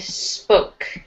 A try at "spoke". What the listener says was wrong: Try not to have an eh sound, just spoke.